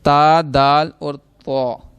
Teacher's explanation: زبان کی نوک اور اوپر کے دانتوں کی جڑ سے یہ ادا ہوں گے